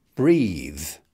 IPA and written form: briːð (breathe)